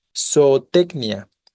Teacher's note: la sílaba tónica es la penúltima en Tec por lo tanto grave terminada en vocal no se acentúa vale